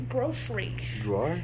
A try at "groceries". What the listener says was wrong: Why are you adding S-H to the S? groceries. Groceries. You sound like the Grinch.